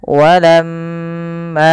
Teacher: Cara membacanya adalah ditahan suara m-nya sepanjang 2 harakat. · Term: bacaan gunnah